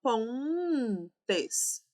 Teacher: Os vocábulos pontes, perceba, pontes, temos um som nasal aqui para o ó e não um som consonantal